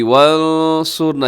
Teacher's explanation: یہاں نون ساکن کے بعد حرف صاد ہے، یہاں اخفا کریں گے